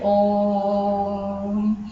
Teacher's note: जिन शब्दों को हम इतना लंबा खींच के चलते हैं वे आते हैं प्लुत स्वर के अंदर